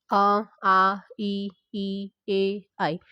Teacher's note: अवृतमुखी में जिन स्वरों का उच्चारण करते समय जो हमारे होठ होते हैं वो गोल नहीं होते हैं, उन्हें बोलते हैं अवृतमुखी।